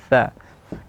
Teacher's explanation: Nah, sudah kita jelaskan bahwa sin dan tsa tempat keluar hurufnya beda. Kalau tsa ujung lidah bertemu dengan ujung gigi ee seri yang atas tsa. · Kalau tha, ujung lidah bertemu dengan ujung gigi seri yang atas tha. Kalau sin, dia di belakang gigi tersebut, di dalamnya.